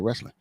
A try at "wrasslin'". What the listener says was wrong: Yeah, you got to throw the A into it. A little wrestling.